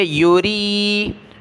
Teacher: را کے نیچے زیر باریک پڑھیں گے